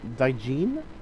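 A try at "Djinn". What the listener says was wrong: Jin. They're pronounced Jin. The D is silent.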